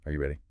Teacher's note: For yes, no questions, the voice usually goes up at the end. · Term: intonation